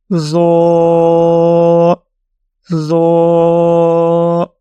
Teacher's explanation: جیسے آپ کو طا کے لیے ایکسپلین کیا گیا تو وہی کنڈیشن ضا کے لیے ہیں، اور ضا کو پڑھنے کے لیے ہم اپنے زبان کی نوک جب اوپر والے دانتوں کے ساتھ ٹچ کرتے ہیں، تھوڑی بھاری یا موٹی آواز پیدا کرتے ہیں، تب ہم اس کو پڑھتے ہیں ضا، ضا۔